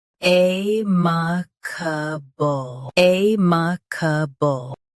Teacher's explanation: Stress A first. Keep ma and ca soft. Then finish with ble.